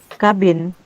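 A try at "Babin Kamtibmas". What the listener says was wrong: Babin Kamtipmas. Babin, bukan kabin, Bu. Babin Kamtipmas. Itu satu kata. Satu kata. Babinsa dengan Babin Kamtipmas tuh beda. Babin. Iya. N. Ya, Kamtipmas.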